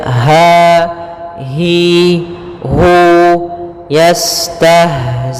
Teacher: Kemudian dia sifat ha yaitu sifat rokhawah juga, dan dia makhrajnya huruf ha kita keluarkan dari pangkal tenggorokan kita